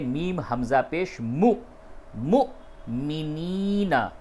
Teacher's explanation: آپ اس کے اوپر جھٹکے سے اس واو کو ادا کریں گے۔ یہ واو مدہ نہیں ہے، اس کو کھینچنا نہیں ہے ، نہ تو یہ واو لین ہے، بلکہ یہ واو حمزہ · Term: واو حمزہ کی شکل میں